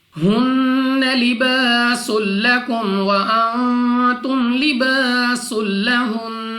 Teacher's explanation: نون مشدد غنہ کر کے پڑھیں گے. ناک میں لے جا کر پڑھنا ہے. · الف سے پہلے زبر الف مدہ 2 سیکنڈ تک کھینچ کر پڑھا جائے گا. سین کو سیٹی والی آواز کے ساتھ پڑھنا ہے.